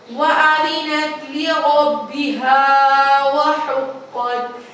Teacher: وَأَذِنَتْ لِرَبِّهَا وَحُقَّتْ، یہاں پہ اب پھر سے آ گیا الف خالی اور زبر ہے تو یہاں پر الف مدہ ہے تو اس کو 1 الف کے برابر لمبا کریں گے، اور جو قاف ہے وہ موٹے حروف میں سے ہے تو اس کو پر کر کے یعنی کہ موٹا کر کے پڑھیں گے